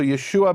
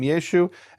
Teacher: In Northern Hebrew, they didn't pronounce the ayin.